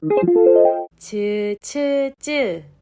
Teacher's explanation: 앞 혓바닥이 센 입천장에 닿았다가 떨어지면서 나는 파찰음이 되겠습니다